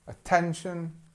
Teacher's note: attention strength on the second part of the word